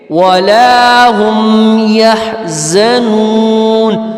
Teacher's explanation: اب یہ حلوہ ہا ہے، اس کو حلق سے ہم نکالنے کی کوشش کریں گے